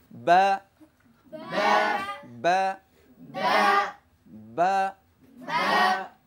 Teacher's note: বা টা হবে ঠোঁটের ভিজা জায়গা থেকে বা শক্ত